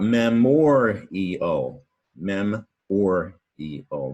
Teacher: The stress is on the O-R, mem-or-e-o.